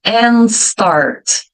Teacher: Então não emenda, mas não aparece o som do D. E o N, ele fica esticado, né?